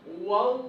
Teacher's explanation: So feel that deep sound, that heavy sound, and your tongue is also quite thick. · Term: Tafkheem